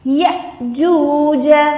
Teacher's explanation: یا حمزہ زبر یا، جب بھی الف کے اوپر یہ سکون آتا ہے، یہ والی نشانی آتی ہے، تو ہم الف کو جھٹکا دے کے پڑھتے ہیں. اس حمزہ کو ہم نے کیا کرنا ہے جھٹکا دے کے پڑھنا ہے، لمبا نہیں کرنا. یاجوج ایسے ہم یا کو لمبا نہیں کر سکتے.